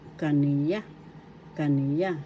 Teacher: First syllable ka, second syllable ni, third syllable ya. Second syllable is the accent.